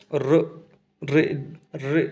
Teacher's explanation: र बोल रहे तो दांत के थोड़ा ऊपर जाकर जीभ लग रही है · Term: मूर्धा